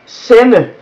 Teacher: Now the word sende has a D in it, but it's not pronounced because it follows an N. So in that way, it just becomes this sound, but not a D sound. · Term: the mute D